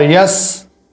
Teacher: یا کے اوپر زبر ہے، سین ساکن ہے، اور یہاں پر سین پر جو ہے دانت ملانے ہیں۔